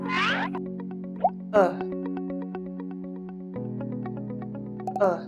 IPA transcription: ʊ